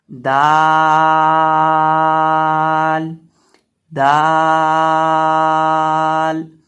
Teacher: अब दाल का मखरज वही है जो ता का मखरज था, यानी जुबान की नोक सामने वाले ऊपर के दो दांतों की जड़ से जब लगेगी तो दाल